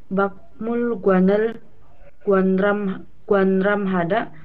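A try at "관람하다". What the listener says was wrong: Kualam Hada. Pangmul Guanel Kualam Hada, bacanya Pangmul Guan ya ini. Nah, Bang Mulguan. Nah, ini bukan Kuanram tapi Kualam. Kualam Hada. Nian bertemu dengan real, dia niannya itu berubah menjadi L ya. Real.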